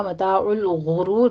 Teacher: ہونٹ گول کر لیجئے اور غین کو پر بھی پڑھنا ہے، را کو بھی مفخم پڑھنا ہے ، آخر میں بھی را مفخم ہو جائے گی، ابھی تو